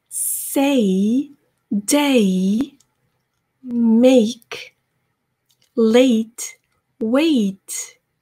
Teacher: 이거는 이중 모음이고요. 여러분들이 이중 모음에서 정말 주의하셔야 할 것이 호흡을 한 번으로 하셔서 에에서 이까지 A 한 번에 가셔야 돼요. 한 호흡으로. 그게 가장 중요합니다.